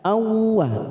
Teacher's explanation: Langsung masuk pada huruf waw. Ada fathah tanwin pada huruf hamzah. Awwa. Kita tekan 3 ketuk. Idgham bi gunnah.